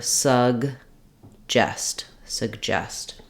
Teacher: in the word suggest our stress is on the second syllable